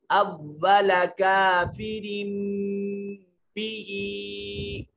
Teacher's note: اب یہاں دیکھیے را کے نیچے تنوین ہے اور یہ اوپر چھوٹا میم دیا ہوا ہے. تو نون تنوین کے بعد جب حرف با آ جائے تو نون تنوین کو چھوٹی میم سے بدل دیتے ہیں.